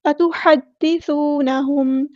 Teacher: واو مد آ گیا تو اس کو ایک الف کے برابر لمبا کریں گے